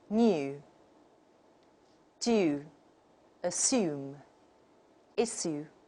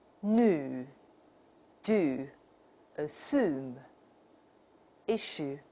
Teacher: Like the British model will say new, do, assume, issue. And the American model will elide this y sound, and they become new, do, assume, issue. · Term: y dropping